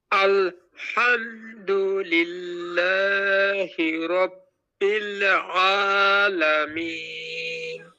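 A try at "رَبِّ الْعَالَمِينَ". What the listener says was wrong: রব্বিল বেশি গুনা করেছি কিন্তু অত হবে না হালকা আপনি হালকা করবেন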